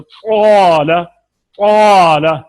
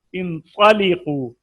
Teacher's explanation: जैसे क़ाल क़ाल, ठीक है जी, क्योंकि अलिफ भी पुर है क़ा भी पुर है, तो दो पुर हरफ जब इकट्ठे हो गए तो बहुत ज्यादा तफखीम बनेगी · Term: आला दर्जा की तफखीम